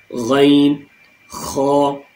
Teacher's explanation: 2 ہمارے تھروٹ کے بالکل اوپننگ پوائنٹس سے نکلتے ہیں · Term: تھروٹل لیٹر